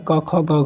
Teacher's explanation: जिनका उच्चारण कंठ के स्पर्श से होता है